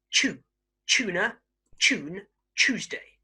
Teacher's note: Okay, so as you may see, okay, some British speakers are a little bit lazy with this. Okay, so words that start with tu, so tu, are often pronounced ch